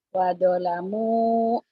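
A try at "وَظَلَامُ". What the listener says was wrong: Jangan wado ya, agak rapuh. Wazo. Zo ya, kalau do yang short titik, tok titik.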